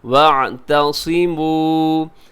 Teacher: سب سے پہلے وَاعْتَصِمُوا، عین کا خاص خیال رکھیے گا، تھوڑا لمبا کیجیے گا کیونکہ آخر میں واو مدہ ہے. واو ساکن سے پہلے پیش واو مدہ ہوتی ہے، اسے ہمیشہ کھینچ کے پڑھا جاتا ہے